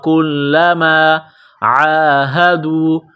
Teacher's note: میں سختی کرنی ہے کل میم الف زبر ما کلما عاہدو عین کو گلے سے نکالیں گے زور لگا کر عین کے اوپر کڑا زبر ہے